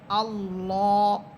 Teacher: এখানে আল্লাহ শব্দের পূর্বে আছে জবর, আল্লাহ শব্দ এটা মোটা করে পড়তে হবে।